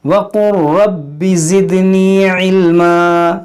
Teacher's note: یہاں پر دیکھیں وَقُرْ کیسے پڑھیں گے, واو زبر وا, قاف لام را پیش قر, یہ لام اس را کے اندر داخل ہو جائے گا. یہاں پر یہ لام سائلنٹ ہوگا, اس لام کی آواز یہاں پر نہیں آئے گی, را کی آواز آئے گی.